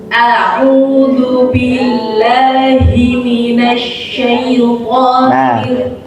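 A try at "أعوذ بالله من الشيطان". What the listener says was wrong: Ya sukun jangan sampai ikut tebal ke huruf to. Nggih, syaiton bukan syaiton. Nah, jadi syaiton.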